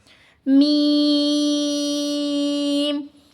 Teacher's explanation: इसको पढ़ते वक्त अक्सर जो है नाक में आवाज चली जाती है जो कि बिल्कुल भी नहीं जानी चाहिए। और दोनों होठों के खुश हिस्से से अदा होता है।